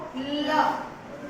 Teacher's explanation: ਦੇਖੋ ਲ ਤੁਹਾਡੀ ਜਿਹੜੀ ਜੀਭ ਦਾ ਅਗਲਾ ਹਿੱਸਾ ਆ ਬਲੇਡ ਆ ਜੀਭ ਦਾ ਅਗਲਾ ਹਿੱਸਾ ਉਹ ਤੁਹਾਡੇ ਉੱਪਰਲੇ ਦੰਦਾਂ ਦੇ ਅੰਦਰਲੇ ਪਾਸੇ ਮਸੂੜਿਆਂ ਨੂੰ ਛੂ ਕੇ ਆਏਗੀ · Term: ਲਲਾ